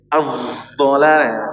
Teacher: dha itu ujung gigi seri, ujung lidah menempel ke ujung gigi seri atas. Jadi ujung sama ujung ya.